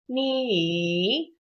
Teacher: just try to go for a third tone on the first try. Make a little check mark with your voice.